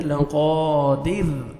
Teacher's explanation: را ساکن سے پہلے زیر ہے را کو ہم نے باریک کر کے پڑھنا ہے